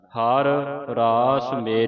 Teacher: ਹਰ ਹਰ ਪੂਰਾ ਬੋਲ ਕੇ ਫਿਰ ਰਾਸ ਬੋਲਣਾ ਹੈ ਕਿਉਂਕਿ ਇਕੱਠੇ ਰਾਰੇ ਨੇ ਇਸ ਕਰਕੇ ਆ ਹਰ ਪੂਰਾ ਰਾਰਾ ਬੋਲ ਕੇ ਫਿਰ ਅਗਲਾ ਰਾਰਾ